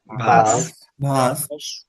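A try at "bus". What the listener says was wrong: এই যে অনেকের ভাস শুনতেছি ভাস না বাস বাস ভাস বললে কিন্তু বাস বের হবে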